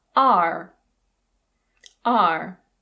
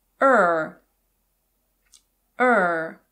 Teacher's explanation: In American English the strong form of this word is /ɑːr/. /ɑːr/. The weak form is /ər/.